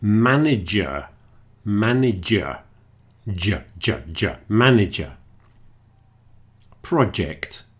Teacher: It's related to the ch as in chocolate and choco, but it's more voiced. It's down in your throat. · J, not a Y sound. The Y is more like a vowel and the J is more like a consonant. It's related to the ch as in chocolate and choco, but it's more voiced. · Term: J sound